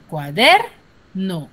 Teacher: ¿Y dónde recae la mayor fuerza de voz? En der.